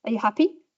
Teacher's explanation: You can say it as a question, and you can say happy with a rise.